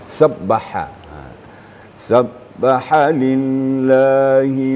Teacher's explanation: bacaannya halus ya terasa getarnya di eh tengah-tengah tenggorokan ha di mulut sedikit dibuka dibuka sedikit kemudian a dihembuskan dulu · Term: huruf ha